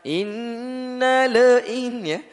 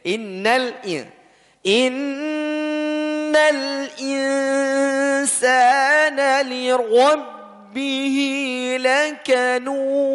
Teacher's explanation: Innal, jangan sampai lamnya dipantulkan.